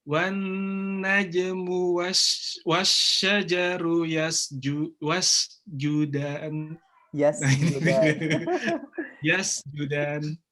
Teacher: Sudah lebih terdengar tengah lidahnya terangkat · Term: huruf jimnya